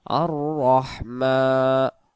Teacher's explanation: রহ মিম জবর মা আর রহ মিমের খারা জবর এক আলিফ মিমের উপর খারা জবর এক আলিফ টানতে হয়